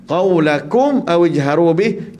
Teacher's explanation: kita izharkan, jelaskan mim mati tanpa dengung